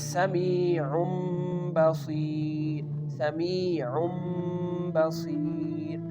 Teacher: Again the Tanween becomes Meem sound. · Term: iqlab, Iqlaab